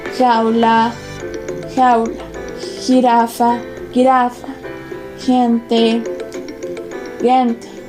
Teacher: Fricativa dorsovelar sorda. Este fonema se representa ortográficamente como J o ante una I o una E como G.